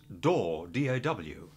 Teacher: And door, the word door, almost becomes daw